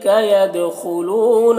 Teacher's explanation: یدخلون دال میں قلقلہ ہوگا، خا کو پر پڑھیں گے